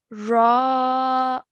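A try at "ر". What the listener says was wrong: Okay, so at the moment you're saying raw.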